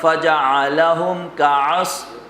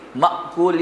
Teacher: عین کی آواز ذرا تکلف کے ساتھ اور حمزہ کی آواز ذرا جھٹکے کے ساتھ